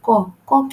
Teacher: ক হচ্ছে অল্পপ্রাণ অঘোষ ধ্বনি